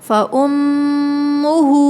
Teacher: میم ساکن پر، میم مشدد پر غنّہ ہو رہا ہے